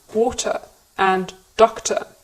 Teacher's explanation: in words like these, we don't pronounce the R sound at the end of the word in British English. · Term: schwa